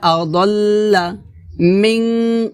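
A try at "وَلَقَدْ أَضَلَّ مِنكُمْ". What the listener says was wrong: মিং গুণ হবে, আদল্লা এটা হবে না, হবে আদল্লা দটা জিব্বার গোড়ার কিনারা উপরের মারিদাতের গোড়ার সঙ্গে লাগিয়ে মোটা করে উচ্চারণ করতে হবে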